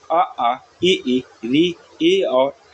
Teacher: इसमें जब हम लोग उच्चारण करते हैं ओठ समान स्थिति में रहते हैं, कोई गोलापन नहीं आता है। इसमें आपके जो वर्ण आपके आते हैं आ ई री ए और ऐ आपके आते हैं। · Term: आवृतमुखी